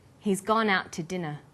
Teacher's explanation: We stress he gone out and dinner